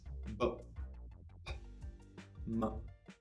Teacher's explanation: you use your two lips to make the sounds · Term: Bilabial